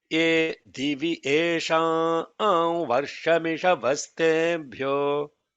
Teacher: don't give gap between Esham and Varsham